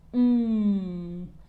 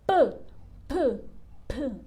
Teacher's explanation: de la p que es p p p aventamos no Entonces no es lo mismo m que se mantiene cerrado en la m a p que abre avienta entonces ambos se producen en el mismo lugar pero la articulación